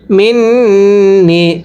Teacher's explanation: এরপরে মিম নুন জের মিন, গুন্নাহ করব। যদি নুন সাকিনের পরে তাসদীদ লাম নুন থাকে তাহলে নুন সাকিন বাদ দিয়ে পড়তে হবে।